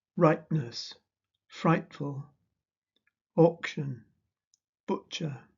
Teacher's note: In modern RP, there is often glottal reinforcement of p, t, k, ch. The consonant is preceded by a glottal stop.